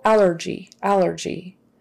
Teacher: Stress is on the first one, the first syllable